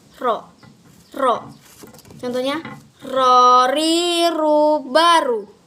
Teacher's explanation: lafalkan huruf ro dengan menyentuh lidah yang langit-langit bagian depan. Contohnya gini, ro.